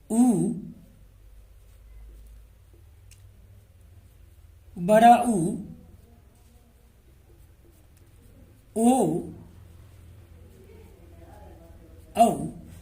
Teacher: तो इन स्वरों का यदि मैं उच्चारण करता हूं तो होठों की आकृति गोल होती है। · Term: वृत्ताकार स्वर